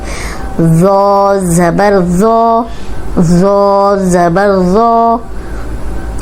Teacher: نرم حروف آ گیا، موٹا بھی ہے اور نرم بھی، ذو، اوپر سامنے والے جو 2 دانت ہیں ان کے اندرونی کنارے پہ زبان رکھ کے ادا کریں گے تو سیٹی کی آواز نہیں آئے گی